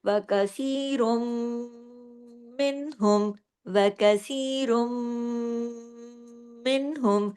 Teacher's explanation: پھر دیکھیے وَكَثِيرٌ مِّنْهُمْ، وَكَثِيرٌ مِّنْهُمْ، را دو پیش رن کی تنوین تھی لیکن آگے تشدید تھی میم کے اوپر، تو را جا کے میم میں جڑا، ادغام ہوا اور اکمل غنہ ہوا میم مشدد ہونے کی وجہ سے